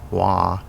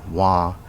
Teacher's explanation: the glottal sounding word wa means pig but the non-glottal sounding word wa means i or me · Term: glottal sounds